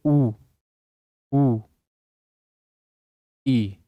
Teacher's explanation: संवृत स्वर के अंदर आपका जो मुख है वह न के बराबर खुला होगा।